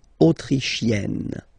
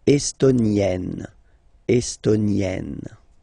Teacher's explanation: you get E and then double N, you open the E